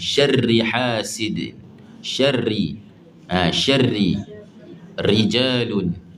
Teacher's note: Huruf ra tu sendiri baris bawah. Jadi bila baris bawah huruf ra mesti dinipiskan. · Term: ra tarkik